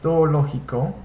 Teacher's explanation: The zeta makes the S sound